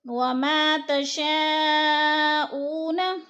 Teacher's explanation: تشاء پہ مد متصل ہے، 4 الفی مد ہے. حروف مدہ کے بعد حمزہ اسی کلمے میں ہے تو ادھر 4 الفی مد ہے، 4 الف کے برابر ہم نے اس کو کھینچ کر پڑھنا ہے.